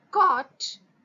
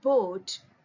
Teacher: then releasing the closure abruption and when we pronounce the word caught lips are rounded whereas in boat our lips are spread